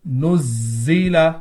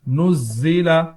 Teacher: زا میں سیٹی کی آواز